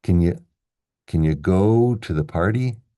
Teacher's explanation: can, that's unstressed, schwa, can, can you, can you go to the party?